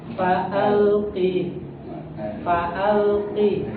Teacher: Huruf lam itu tidak boleh qalqalah, Pak.